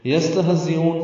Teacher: سین ساکن اور ہا ساکن، ان دونوں میں ہمس ہے، سانس کی آواز جاری رہے گی. زا تیز صفیر کی آواز سے ادا کریں گے اور حمزہ کو وقفاً لمبا کریں گے.